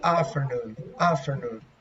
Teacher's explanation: For Americans, they say afternoon, afternoon. They omit the T